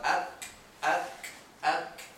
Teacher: The kaf, you bring the tongue slightly forward, where the soft and the hard palate meet up, and you get a different sound.